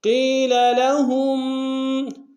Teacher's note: قیل میں یا مدہ ہے، قاف کو موٹا ادا کریں گے